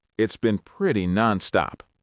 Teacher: Notice how the T in "it's" and the B in "been" just melt together. Notice how pretty and non-stop flow right into each other. Try to sound a little tired, a little relaxed. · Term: linking